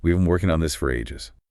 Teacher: Listen for the compression and the final stress.